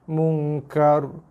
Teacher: Ra mati sebelum dia bagi atas. Ra tebal.